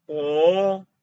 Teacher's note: the second tone is from middle to high